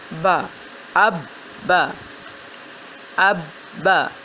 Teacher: جیسے کہ حمزہ زبر با، اب با زبر با، اب با، اب با، با کی آواز پہلے حمزہ کے ساتھ اب، اور پھر با کی اپنی آواز با، اب با، اب با، با کی آواز 2 مرتبہ اس لیے کہ اس کے اوپر شد ہے۔ پہلے با کو حمزہ کے ساتھ ملایا، حمزہ زبر با اب، پھر با کی اپنی آواز با زبر با، اب با۔